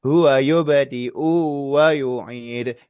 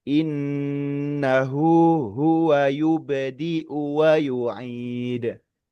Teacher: Itu u-nya dipanjangin padahal sebetulnya pendek.